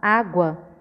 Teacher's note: quando a gente fala água, a gente coloca um som mais fraco no U e mais forte no A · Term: semivogal